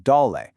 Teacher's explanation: Second, notice the le in doll. That's a neutral tone. It should be light, quick, and unstressed, almost like an afterthought. Don't give it a full heavy tone.